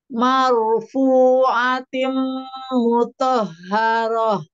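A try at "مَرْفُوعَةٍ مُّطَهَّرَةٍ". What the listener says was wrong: Tim tahan. konsistenkan dua harokat ketika wakof.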